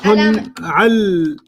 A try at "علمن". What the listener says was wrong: Don't change the word. Just change the ending. علمنا. but the word was always علمنا, so we don't get to change what it used to be. We only get to mess with the ending.